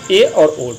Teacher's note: अर्ध संवृत मुख आधा खुला होता है। जैसे ए और ओ।